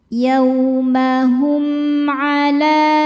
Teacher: huruf selain mim dan ba yaitu ain. Cara bacanya mim dibaca jelas.